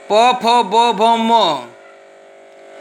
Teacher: जो कि उच्चारण स्थान है ओष्ठ। ओठ, ओठ के जरिए ये स्पर्श होता है। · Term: प वर्ग